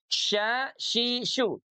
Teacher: keluarnya dari tengah lidah, satu makhraj, satu tempat dengan huruf jim. Pun satu tempat dengan huruf iya. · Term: huruf shin